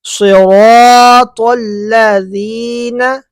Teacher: سرا نہیں ہے سی موٹا صاد